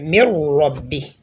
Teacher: You say mir rabbi, right? Mir Rabbi, but we have noon there, but we did not hear the sound of the noon. It was only that of a raw, right? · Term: perfect assimilation